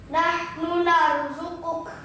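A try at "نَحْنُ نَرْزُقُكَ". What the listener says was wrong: Kurang tebal. Nahnu nau tebalnya roh itu dengan cara mengangkat lambemu sing disor angkatan mendukur. Itu menjadi tebal.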